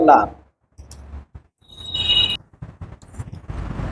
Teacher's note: हवा होती है वो दोनों बगलों से निकलती है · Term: पार्श्विक व्यंजन